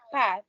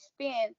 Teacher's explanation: Aspiration allophone. The P sounds in pat, aspirated versus spin, unaspirated.